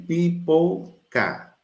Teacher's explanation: Você nota que esse A final aí, ele está invertido, né? Esse A aí que nós chamamos chuá. É um A invertido. Ele, na verdade, é uma vogal reduzida.